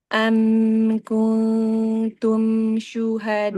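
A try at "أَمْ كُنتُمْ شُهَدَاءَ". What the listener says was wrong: Jangan terlalu lama, mim sukun jedanya. Kul itu kelamaan. Kuntum syu.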